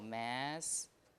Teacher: Double S, when you have a double consonant, is lengthened. So the vowels around that lengthened consonant will not affect it.